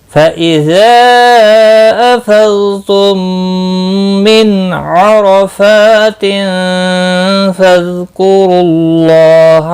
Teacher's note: اللہ کا لام پیش کی وجہ سے پر پڑھا جائے گا، اس کے اوپر کھڑی زبر بھی ہے، ایک الف کے برابر کھینچ کر پڑھیں گے۔